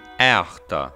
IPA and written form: ˈæ͜ɑxtɑ (eahta)